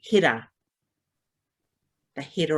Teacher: same sounds the differences are when it comes to the r we have a rolled r sound which is like you a soft d